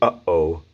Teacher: it's a glottal push it's like the catch when you say uh-oh